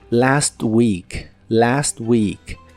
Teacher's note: la palabra week se pronuncia con la i larga